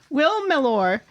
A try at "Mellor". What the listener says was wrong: Mellor. Will Mellor. You're saying Mellor. You're putting the emphasis on the or. Mellor. Just say Mellor. Imagine it's spelled M-E-L-L-E-R.